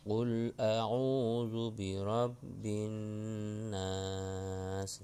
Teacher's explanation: Contohnya baca surah An-Nas, qul a'udzu birabbin nas. Di situ ada nun tasydid, tasydidnya gunnah. Gunnahnya tiga jari.